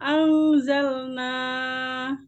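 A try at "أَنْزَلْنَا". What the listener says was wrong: Ditahan ya. Anzalna. Panjang.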